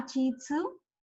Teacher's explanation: It will not be ti. They don't have ti. Instead of ti there is chi.